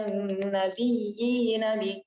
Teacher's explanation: Ini tamkin ya, 2 harakat. Nggak boleh panjang. Kecuali kalau di Warash.